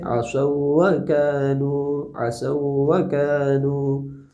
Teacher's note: واو لین اگر مدغم ہوگا تو نبر ہوگا، یعنی کہ واو کی آواز کو تھوڑا سا بڑھا دیا جائے گا